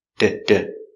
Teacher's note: The T is between two vowels, so we pronounce it as a d sound, like a D.